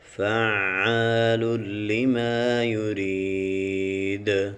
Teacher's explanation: جب وقف کریں گے اس کی دال کے اوپر قلقلہ بھی کریں گے